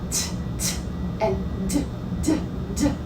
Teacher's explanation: D is the noisy brother because you hear it vibrating in your head. And T is the quiet brother.